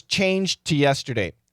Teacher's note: in this case I don't like saying it's a stop D it Blends into the T we got that D there but we hear almost only T